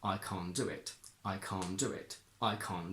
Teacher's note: can't is a combination of can plus not. So that is a content word and we must stress it and we can't make it weaker.